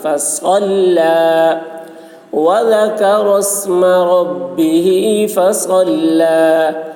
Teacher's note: صاد کی آواز سخت ہوگی اور لام باریک